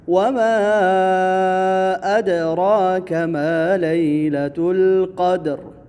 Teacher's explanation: وَمَا أَدْرَاكَ یہاں پر بھی مد جائز منفصل ہے، 4 الفی مد۔ دال حروف قلقلہ میں سے ہے تو یہاں قلقلہ ہوگا